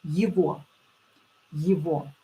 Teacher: pay attention that G here will be pronounced as V. Yevo, Yevo.